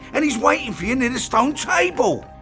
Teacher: And is reduced to N, and it merges into he is, which is reduced to just is.